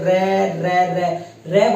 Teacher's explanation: हम रे बोलेंगे, रे रे रे रे बोलते हैं तो जीभ कंपन करती है, उसे बोलते हैं प्रकंपित या लुंठित व्यंजन।